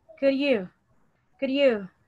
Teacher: sometimes you can even omit the sound of the letter D.